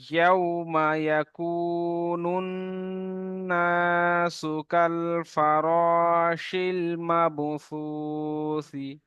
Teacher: নুন, নুন পেশ, নুন, নুনের উপর তাসদিদ। নুন তাসদিদ ওয়াজিব গুণনা, একালি পরিমাণ গুণনা করতেই হবে।